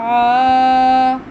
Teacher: عین پڑی زبر الف آ، عین کا تلفظ بھی آ نہ آئے، آ حلق سے آئے